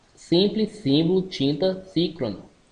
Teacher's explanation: fechado frontal nasal não arredondado